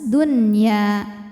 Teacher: Dunya Dun kemudian ada hukum izhar wajib atau izhar mutlak sebab nun sukun menghadapi huruf ya dalam satu kata yaitu kata addunya yang artinya dunia maka Nun dibaca jelas